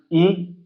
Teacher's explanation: ए मतलब आगे से बोले जा रहे हैं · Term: अग्र स्वर